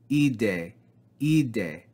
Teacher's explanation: or no aspiration and we read e day e day not he day but e day with no rough breathing